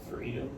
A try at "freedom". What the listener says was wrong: So you're going freedom, like it's a question, not an answer. Question, not an answer. Freedom. Well, you're asking it what freedom? how's he going to understand what you're saying when you're doing that?